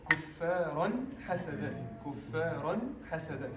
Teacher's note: So this letter came after tanween, it's ha. So in that case, he has to pronounce tanween clearly.